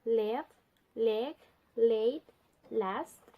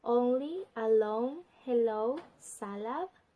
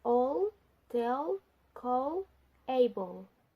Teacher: sounds where the air escape around the side of the tongue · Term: lateral